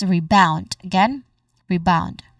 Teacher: This is a short unstressed re sound like in return. So, there's a short vowel sound here and followed by bound, which is the stressed syllable.